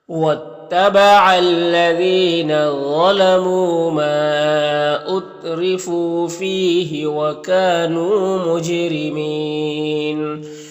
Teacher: रा के नीचे ज़ेर रा को बारीक पढ़ेंगे और यहाँ पर वक्फ़ की सूरत में मद्दे आरिज़ वक्फ़ी होगा, तो इस तरह से पढ़ेंगे।